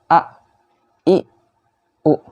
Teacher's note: Jadi a-nya harus tipis. Kemudian ketika hamzah ini sukun bunyinya a. Jadi terhenti ya, bukan mengalir seperti ain